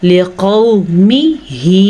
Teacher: वाव मद्दा कहते हैं वाव साकिन से पहले पेश का आ जाना, और वाव लीन कहते हैं वाव साकिन से पहले ज़बर का आ जाना। तो इसीलिए हम इसको पढ़ेंगे लिक़ौ, नरमी के साथ और बग़ैर लंबा किए।